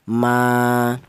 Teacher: Panjangnya matobi yaitu 1 alif atau 2 harokat.